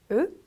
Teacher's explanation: 입 모양을 조금 둥근 상태에서 제가 한글 도금을 으라고 적어드렸지만 우리 한글 발음할 때처럼 옆으로 가로로 벌어지는 발음이 아니고 둥근 상태에서 읽어주시면 되세요.